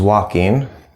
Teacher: the L here is silent